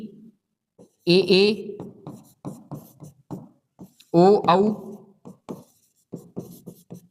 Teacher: यह ध्वनियां हमारी अननुनासिक होती है। मतलब इनका उच्चारण केवल मुख से होता है। क्योंकि स्वर हमेशा मुख से बोले जाते हैं।